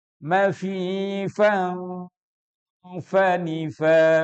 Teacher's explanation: fa itu huruf syafatain, di mana itu melibatkan 2 bibir kita